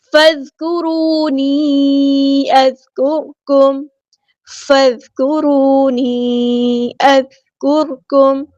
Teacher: فا کو ہم نے ذال کے ساتھ ملا دینا ہے حمزۃ الوصل ہمارا ڈراپ ہو جائے گا ذال باریک نرمی سے ادا کرنا ہے سخت نہیں لے کر · ڈس کنیکٹڈ مد ہے کیونکہ ایک کلمے میں مد ہے دوسرے کلمے میں حمزہ ہے چھوٹی مد مد منفصل اس کو 4 یا 5 کاؤنٹ ہمیں لمبا کرنا ہے از کرکم نہیں پڑھنا ذال ساکن کو ہلانا نہیں ہے از